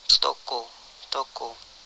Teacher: Vokal O. Vokal belakang, sedang atas, bundar, semi tertutup.